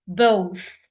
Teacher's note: The second, both, th, it sounds f. My tongue is placed in between my upper teeth and my lower teeth